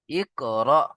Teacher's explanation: হামজার উপরে যখন সাকিন আসে একটু ঝাটকা দিয়ে পড়তে হয়